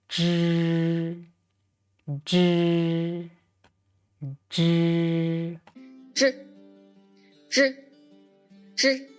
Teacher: This sound is not aspirated, just as in the English words junk. J, J, J. · J. So, turn up the tip of tongue against the hard palate and then loosen it a bit and let air out. This sound is not aspirated, just as in the English words junk.